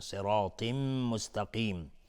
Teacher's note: تا باز از حروف استعلاء غلیظ طرف میشه، تنوین بعدش میم ادغام با غنه